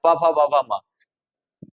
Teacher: और आप मुंह खुला ही रहेगा तो नहीं बोल पाएंगे। प फ ब म बिना मुंह बंद किए इनको बोलेंगे तो बोल ही नहीं पाएंगे। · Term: ओष्ठ